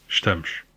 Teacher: You can also hear the vowel reduction in the European word, with the first vowel basically dropped.